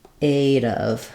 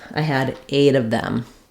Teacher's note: If I'm saying 8 of them, I'll link it together, and that T will turn into a little bit more like a D. It'll turn into a flap sound.